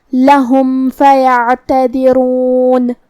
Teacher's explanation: فا حروف الاظہار الشفوی میں سے ہے، لہذا ہم میم کو ظاہر کریں گے اور بغیر غنہ سے یہ حکم کو ادا کریں گے